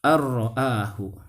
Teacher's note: Karena apabila nun sukun bertemu dengan huruf ro, maka nun sukunnya itu dimasukkan ke huruf ro dan tidak ditahan